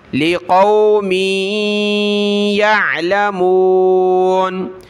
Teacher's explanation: میم کو یا کے ساتھ ملایا، ناک میں آواز پیدا کریں گے